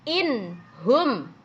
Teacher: nun sukun bertemu dengan huruf ha ya nunnya kedengaran jelas